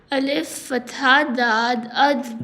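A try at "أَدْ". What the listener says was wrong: Dal. Alif Fatha Dal Ad. So Dal also has similar sound. So how we can make difference between Dal and Dad? Dal has kalkala and Dad has no kalkala sound.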